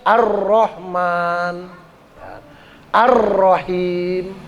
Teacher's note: Kalau alsyamsiyah itu lamnya itu enggak bunyi, enggak kedengar, enggak terbaca gitu.